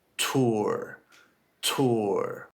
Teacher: my lips are rounding as I'm going from the ooh sound into the R sound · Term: lip rounding